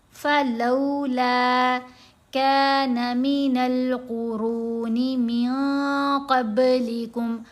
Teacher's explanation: قاف کو بھی موٹا پڑھنا ہے، را کو بھی موٹا پڑھنا ہے